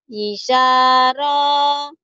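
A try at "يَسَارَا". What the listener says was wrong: Yinya panjang juga, panjang semua.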